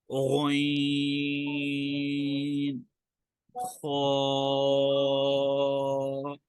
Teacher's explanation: اور چوتھا مخرج ہے جو ادنا حلق سے ادا ہوتا ہے، یعنی کہ حلق کے اوپر والے حصے سے۔